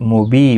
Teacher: بی یا مدہ ہے، ایک الف کی مقدار کے برابر کھینچ کر پڑھیں گے۔ اور وقف کی صورت میں یہاں پر بھی وقف بالابدال ہوگا، تنوین کو بدل کر ایک زبر کے ساتھ وقف کریں گے، ایک الف کی مقدار کے برابر کھینچ کر وقف کریں گے۔